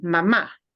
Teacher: when you really mean mom you need to punch the ah at the end mama because otherwise it sounds like the verb that means a